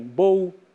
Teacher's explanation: apagamento da estrutura da líquida intervocálica